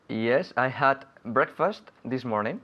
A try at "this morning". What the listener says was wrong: Very good. This morning, though, sacando la lengua.